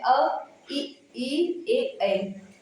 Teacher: तो सिर्फ वृत्त मुखी में आ जाते हैं उ ओ औ अवत्त मुखी यानी कि इनमें वृत्त नहीं बनता है।